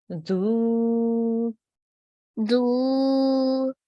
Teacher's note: We will say it for 2 seconds again because there's an inverted dhamma.